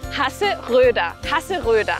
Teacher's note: La primera R gutural. La O umlaut formando una O con los labios pero diciendo E. Y la R al final como A.